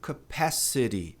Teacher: No inglês americano, tem uma tendência a pronunciar esse T como R.